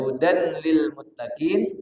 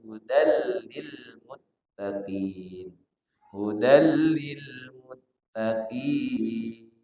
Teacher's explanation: Hudallil itu ada tanwin, hudan. Di depannya lam. Maka namanya idgham bila gunnah. Maka dia bacanya tidak hudan lil muttaqin tapi hudal lil muttaqin.